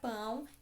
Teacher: primeira vogal a depois a semivogal o também nasal